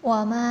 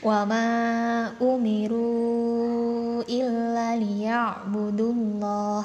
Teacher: wama ini bisa dibaca panjang sepanjang 2 harokat, 4 atau 5 harokat, terserah teman-teman mau seberapa panjang ya. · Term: mad jaiz munfasil